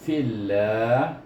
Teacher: Oleh kerana fa ini baris bawah, baca lam dengan nipis. Lam Jalallah itu kita baca dengan nipis.